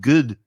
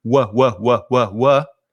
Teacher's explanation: some spanish speakers try to introduce a g sound at the beginning like it sounds like good to me sometimes instead of using the mouth and the lips to just do wha wha they're coming from the throat like